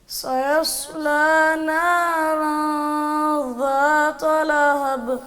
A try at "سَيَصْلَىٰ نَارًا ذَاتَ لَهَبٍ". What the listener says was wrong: ذات ذات یہ تا تا بنا دی ہے. ایک ہے دال زال والا زال, ایک ہے را زا والا زا.